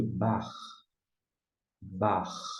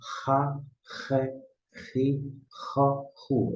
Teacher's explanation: um CH que seria mais próximo ao CH alemão. É um som gutural